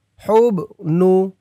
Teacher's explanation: হুব, এই হা দিয়ে পরের লাইনে এই যে জজমলা বা ধরবে, এই বাটা কলকলার হরফ ধাক্কা দিয়ে পড়তে হবে।